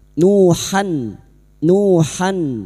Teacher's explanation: Han han huruf ha jangan tertukar ha han huruf ha makhrajnya ada pada wastul halqi yaitu tengah tenggorokan dan huruf ha memiliki sifat hames dan rakhawah mengalirnya nafas dan suara nuhan ila fathah tanwin pada huruf ha ini bertemu hamzah idhar halq maka dibaca jelas tanpa mendengung